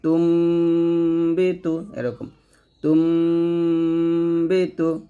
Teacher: তারপরে এটা হলো নুন সাকিনের পরে আসছে, নুন সাকিনের পরে এই যে বা আসছে, নুন সাকিনের পরে বা আসছে, এই জন্য আমরা এখানে কি করছি, নুন সাকিনটাকে মিম সাকিন বানিয়ে পড়ছি